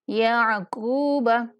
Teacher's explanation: کاف کو موٹا بھی پڑھیں گے اور ایک الف کے برابر لمبا بھی کریں گے